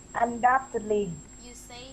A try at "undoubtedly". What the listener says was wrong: you should say doubt. So there's no B sound, it's a silent letter, undoubtedly.